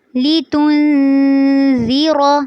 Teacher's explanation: جب تا کو نون کے ساتھ ملائیں گے تو یہاں پر آپ نے اخفا کرنا ہے